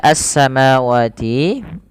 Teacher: alif lam yang tertulis dalam penulisan rosemnya tapi Alif dan lamnya dianggap tidak ada sehingga kita langsung idghamkan saja ke huruf Sin sehingga sinnya berharakat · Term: alif lam syamsiah